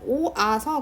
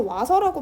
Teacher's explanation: 다음으로 모음 축약은 오아서 같은 경우 줄여서 와서라고 발음할 수도 있잖아요. 이 경우는 오랑 아랑 합쳐서 와라는 이중 모음을 만든 거죠